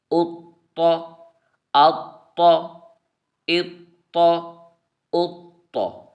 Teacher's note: یہ حروف قلقلہ میں سے طا ہے، تو ہم نے اسے جماؤ کے ساتھ ہم نے پڑھا ہے ، کیونکہ حروف قلقلہ مشدد ہیں تو ہم نے انہیں جماؤ